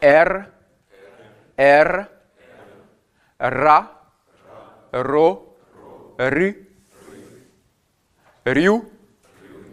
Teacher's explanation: le R russe a une particularité, c'est que c'est un R qui est roulé, R, comme en espagnol, ou en italien, ou dans le sud de la France.